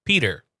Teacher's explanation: There's a D in there, so it's P, and then you say der.